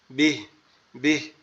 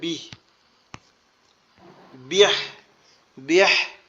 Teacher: শেষের আওয়াজটা গলা চাপা আসবে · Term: হা এর ধাক্কা